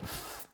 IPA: f